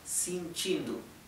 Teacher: Bien, la E, es más, la E se pronuncia casi como una I, sentindo, ¿bien? Y la O a veces la pronuncian casi como una U